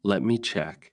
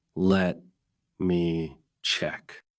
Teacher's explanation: But if you slow down and say it naturally, let me check. With a small pause and a rising tone, it sounds calm, helpful, and polite.